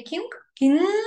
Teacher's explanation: When you say kink, kink, your tongue is on the upper palate.